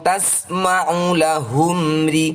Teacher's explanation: Mim sukun diikuti dengan ro adalah bacaan Izhar Syafawi . Harus dibaca dengan jelas tanpa nasalisasi.